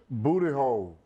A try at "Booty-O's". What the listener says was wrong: O's. It sounds like you're saying hole.